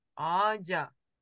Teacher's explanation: Ач – дерево, например. Вот это Ч тоже, попадая между двумя гласными, перейдет в звонкую Дж